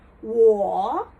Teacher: that is third tone so it dips down and comes back up